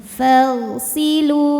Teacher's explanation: Depan fa'nya ada alif, tapi ini bukan pemanjang, ini tuh hamzah washol. Hamzah washol kalau di tengah tuh tidak dibaca ya. Fagh, langsung ke ghain.